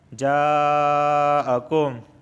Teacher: یہاں پہ مد متصل ہو رہا ہے، ایک ہی کلمے کے اندر مد اور حمزہ دونوں واقع ہوئے ہیں۔ جاءکم، اس جا کو 4 الف کے برابر کھینچ کے پڑھیں گے۔